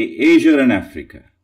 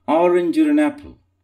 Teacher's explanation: some words which do not end in R will have an R coming in native pronunciation. So when some British people or Americans who pronounce the word Asia and Africa, they might say Asia and Africa. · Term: an R intrudes